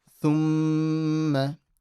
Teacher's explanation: Then a mim with a mushaddada. So you'll do a ghunna.